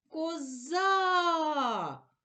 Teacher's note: на склад за голосний а наголошений